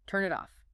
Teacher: Instead of maintaining a clear boundary between the words, the consonant detaches from the end of its home word and glues itself to the beginning of the next word. It bleeds over. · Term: linking